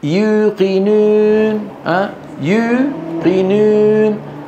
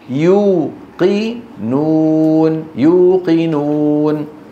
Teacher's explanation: يضم شفتيه نعم لكنه يرفع وسط لسانه يرفع وسط لسانه فيخرج حرف مخلوط واو ممزوجه بياء